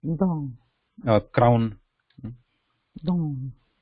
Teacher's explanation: Ah and u mixed is a combination, but we are going to pronounce those two vowels quickly. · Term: ow sound